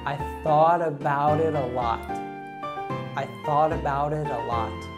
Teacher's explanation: we have three instances here in which the letter T is pronounced as a flap T